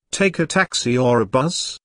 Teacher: taxi or a buzz the word or signals a choice here notice the rising intonation on Taxi the first choice and falling intonation on bus the second choice